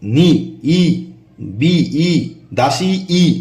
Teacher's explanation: স্বরধ্বনি উচ্চারণের সময় জীব উঁচু হয় জীব সামনের দিকে উঁচু হয় তাই এটি সম্মুখ স্বরধ্বনি ঠোঁট প্রসারিত হয় তাই প্রসুত স্বরধ্বনি ঠোঁট অল্প খোলে তাই এটি